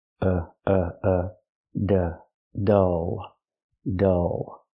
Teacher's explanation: Use the sound like cup and up. It's closed and relaxed. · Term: short sound